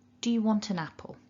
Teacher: we put the schwa in there, and an becomes un. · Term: weak form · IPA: /ə/